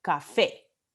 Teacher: la última sílaba tiene vocal tónica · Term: palabra aguda